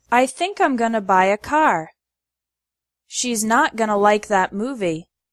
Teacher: The word to becomes ta or I think I'm gonna buy a car.